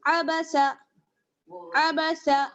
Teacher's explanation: تینوں پہ جو ہے آپ دیکھ رہی ہیں زبر کی حرکت ہے، کسی کو بھی کھینچنا نہیں ہے، تینوں کو ہمیں ایک لیول کے ساتھ پڑھنا ہے